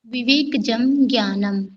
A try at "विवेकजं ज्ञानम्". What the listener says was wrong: हाँ, गुड।